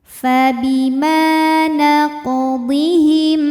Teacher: Sebab huruf qof sukunnya sukun asli dan ada di tengah bacaan. Maka dibaca dipantulkan dengan pantulan yang kecil. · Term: qalqalah sugro, qalqalah sughra